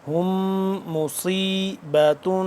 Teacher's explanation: میم آ گیا مشدد، اس پہ ہم کیا کریں گے غنہ کریں گے